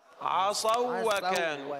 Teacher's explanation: المد هو الواو الساكنة المسبوقة بضم، آمنوا. أما عصوا فهذه واو لين فتدغم، نقول عصوا وكانوا